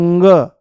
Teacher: वायु जो है वो मुंह से नाम मात्र के लिए बाहर निकलेगी पर नाक से ज्यादा निकलने की कोशिश करेगी और जैसे ही नाक से ज्यादा निकलने की कोशिश करेगी तो